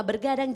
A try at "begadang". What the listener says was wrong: Nggak pakai R deh, nggak pakai R. Nggak pakai R. Begadang. Begadang.